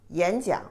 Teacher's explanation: 演讲, when they connect together, the pronunciation for the first one is the second tone.